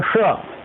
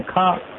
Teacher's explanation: जैसे वेदों में जो षटकोण का सा है, उसको हम बोलते हैं श, मूर्धन्य सकार, परंतु वेदों में उसको बोलते हैं खा।